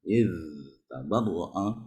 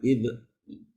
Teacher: pengucapan huruf za ketika sukun ya. Jangan dipantulkan ya.